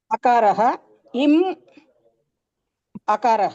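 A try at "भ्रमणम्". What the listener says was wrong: म म म इम् इति न म म इत्येव वक्तव्यम्. अकारः मकारः अकारः. अ म अ.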